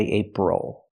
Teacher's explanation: the stress is on the first syllable, ape. The second syllable, is not stressed.